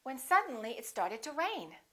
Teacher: Rain would be your focus word.